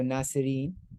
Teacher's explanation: if you're stopping at that, you would drop that last vowel, so nasirin, and then you'd have a pause, and then you can continue the word, with the next sentence.